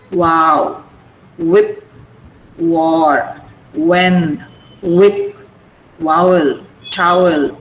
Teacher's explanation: Both lips are used. Both lips come together.